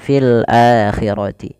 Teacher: hamzah bertemu dengan huruf mad yang 3 alif waw ya, maka dinamakan dengan mad badal, panjangnya 2 harokat